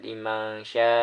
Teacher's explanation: liman sya itu terdapat ikhfa karena nun sukun menghadapi huruf shin.